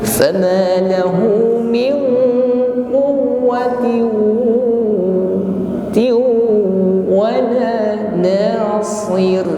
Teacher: ada kasrah tanwin menghadap huruf waw, tiu masuk pada huruf waw, bigunnah dengan berdengung. Selama berdengung bibir dihimpun ke depan.